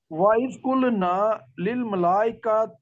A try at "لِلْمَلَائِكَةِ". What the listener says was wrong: مد جو ہے نا، مد کو ذرا کھینچیں تھوڑا، میں آپ کو ڈسٹرب کروں گا. 2 مدیں آ رہی ہیں، للملائکتی.